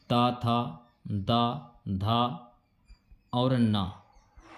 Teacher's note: ये आपके दांत से बोले जाने वाले वर्ण है